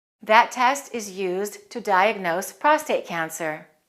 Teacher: prostate cancer is a compound noun so we'll stress the first word and we'll link the words